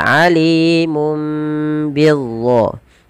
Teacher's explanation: Diganti dengan suara mim. Awalnya alimun, ketemu ba digantikan dengan mim dan ditahan. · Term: iklab